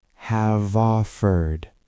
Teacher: Have is often reduced in fast speech, but let's look at the links. Have ends in a V sound. Offered starts with O, so have offered.